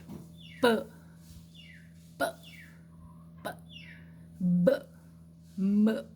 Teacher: o som bilabial, ele é produzido com uma obstrução total